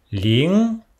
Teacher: le NG meurt dans la gorge, comme en anglais, Ling. Répétez, Ling.